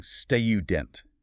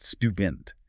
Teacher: Some people force a heavy artificial U sound, saying student, instead of the more standard, relaxed student. They're trying to emulate an upper-class dialect, but in an American corporate context, it often just sounds incredibly strained, artificial, and frankly, a bit pretentious.